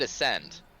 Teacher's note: the emphasis on the second syllable